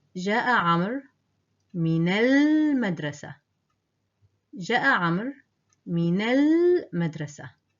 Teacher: the waw in the name Amr is silent, and the alif in the definite article attached to madrasa is silent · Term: silent letters